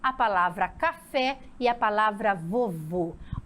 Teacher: oxítonas porque a sílaba forte Ela é pronunciada na última